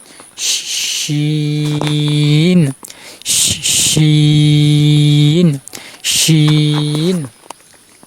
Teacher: জিহ্বার মধ্যখান তারপর উপরে তালুর সাথে লাগিয়ে উচ্চারণ করতে হবে। শিন শিন। এটা শব্দ করতে হবে। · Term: শিন হরফ